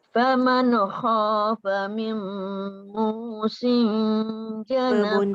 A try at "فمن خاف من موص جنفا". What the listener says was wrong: Bunda hilangkan bunyi nun tu. Faman kha tu. Faman khafa.